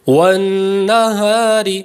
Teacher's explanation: فی قرطاس فی قرطاس والنہار، یہاں پر را باریک ہو گیا کیونکہ را کے نیچے زیر اصلی ہے